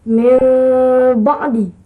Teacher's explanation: mengikhfakan mim di sisi ba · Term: iqlab